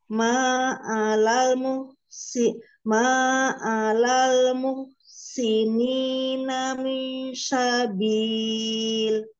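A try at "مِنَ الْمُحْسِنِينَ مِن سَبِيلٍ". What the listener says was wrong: Ya, nanti ditipiskan lagi SIM-nya ya, Bu. Ya, beda kok. Beda, sangat beda. Hanya jangan ada tebal saja. Ya, lidahnya kurang terhampar. Kalau SIM yang ada titik tiga, itu dari tengah. Di tengah lidah. Kalau ini dari ujung lidah ke gigi seri, mengarah ke gigi seri bawah.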